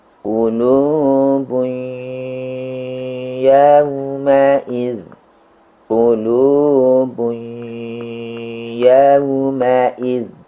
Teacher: Bunyi N pada tanwin menyatu, merger ke huruf waw dan ya. Namun sifat tanwinnya tidak hilang. Di kasus ini, sifat dari tanwin yang tidak hilang adalah sifat gunnah atau dengung. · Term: idgham naqis